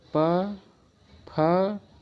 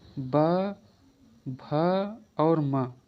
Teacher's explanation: पा और फा ये दोनों हो जाएंगे अघोष और ये तीनों हो जाएंगे घोष।